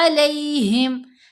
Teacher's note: लीन हरूफ 2 ही हैं, वाओ साकिन और या साकिन, और दोनों की पहचान क्या है कि दोनों से पहले वाले हरफ के ऊपर ज़बर आएगी, या साकिन से पहले भी ज़बर आए और वाओ साकिन से पहले भी जब ज़बर हो तो इनको लीन के तौर पर पढ़ना है। लीन हरूफ मतलब नरमी से पढ़े जाने वाले हरूफ, इनकी आवाज़ टेढ़ी हो जाती है, टिल्ट हो जाती है, स्लाइड कर जाती है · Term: या लीन